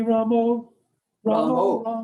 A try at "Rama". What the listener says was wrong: It's not the Ram. It's the Ramo. You should chant Rama, not Ramo. The short A in Sanskrit is pronounced like the U in but. Rama. And the Rama has got the line over, so it's Ra.